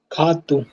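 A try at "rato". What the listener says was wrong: No. You all are going to kh. It's not kh also. ठीक है, ख तक नहीं पहुंचना है आपको, उससे पहले रुक जाना. It's hatu. Hatu.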